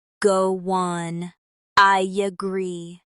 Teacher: When one word ends I and a vowel and the next starts with a vowel. Americans often add a slight consonant sound like Y or W to connect them. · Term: intrusive linking